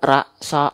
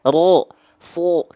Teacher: kalau dia keluar condong ke vokal O bukan A, maka dia adalah huruf yang tebal